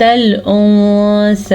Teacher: اچھا جی، یہاں پہ نون ساکن کے بعد حروف اخفاء میں سے سا آیا ہوا ہے، تو نون ساکن کی آواز کو چھپا کے پڑھیں گے اور غنے کے ساتھ پڑھیں گے